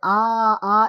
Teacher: সবচেয়ে গলার নিচ থেকে যে বর্ণটা উচ্চারিত হয় সেটা হচ্ছে আ, আর সবার উপর থেকে যেটা উচ্চারিত হয় সেটা হচ্ছে উ এবং ই।